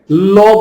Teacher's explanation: পার্শ্বিক বলে এই কারণে, ল বললে জিহ্বার অগ্রভাগ দাঁতের গোড়ায় লাগে আর দুই পাশ নির্গত হয়ে যায়, এই জন্য বলে পার্শ্বিক।